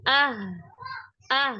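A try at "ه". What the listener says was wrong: Masih ah. Ini terlalu dalam, terlalu ke dada. Ha, hi, hu, ah. Iya, suaranya itu pertama dari suara terdeteksi itu beda ya ketika ke dada. Kemudian kalau kita merasakan, kita sendiri yang merasakan, secara nafas itu kita juga rasanya tuh cepet banget habisnya.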